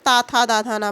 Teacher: दांत और जीभ के स्पर्श से बोले जाने वाले